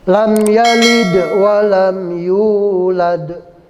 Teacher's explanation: Yulad, yu dibaca panjang itu namanya mad tabi'i karena ada huruf mad, waw sukun.